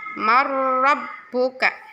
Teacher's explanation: sukun bertemu dengan Cro bacaan idghom Bila Ghunnah roti leburkan dunia dileburkan ke huruf ro tapi jelas tidak ada dengungan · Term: idgham bila gunah